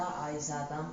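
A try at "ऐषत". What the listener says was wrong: संता नहीं होगा, बोला क्या बना?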